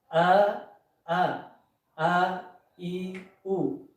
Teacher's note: Kalau hamzah itu keluar dari aqsal halq